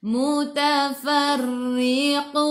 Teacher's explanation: Ingat, bila ra baris bawah nipis, kita baca ra dengan nipis. Jadi senyum.